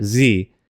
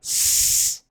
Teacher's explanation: pronounced the exact same way except only differing based on if you use your voice or not